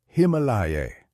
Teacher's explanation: The Tibetans he interviewed said Himalaya, quickly passing over the I.